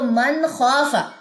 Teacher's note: کیوں غنہ نہیں ہوگا؟ کیونکہ خوا حروف حلقی میں سے ہے، ہم حلقی حروف پہ جو ہے وہ غنہ نہیں کرتے